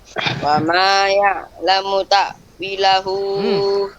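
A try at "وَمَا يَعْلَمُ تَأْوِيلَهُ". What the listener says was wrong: Wi-nya panjang. Ini mat asli ya. Salah. Ya'lamunya munya pendek. Wa ma ya'lamu ta'wilahu illallah. Mana dia alif? Mat silahnya. Ta'wilahu.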